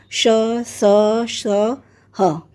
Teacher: ऊष्म व्यंजन वे हैं जिनका उच्चारण करते समय हवा मुंह के किसी विशेष स्थान से घर्षण करती हुई बाहर निकलती है